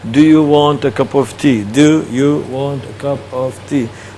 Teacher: Okay, cup of will be one word.